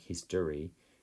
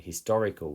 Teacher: in history we hear a schwa sound like history, but when we say the word historical, we can hear the o